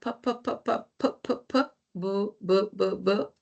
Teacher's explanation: Bilabial, ¿por qué? Porque se juntan los labios. Los labios se cierran. Hay una obstrucción cuando se juntan labio inferior y labio inferior y labio superior, ¿no?